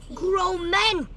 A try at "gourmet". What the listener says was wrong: Why grow? It's gourmet.